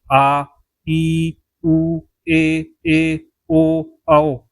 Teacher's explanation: इनके उच्चारण में लगभग दो मात्रा का समय लगता है। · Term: दीर्घ स्वर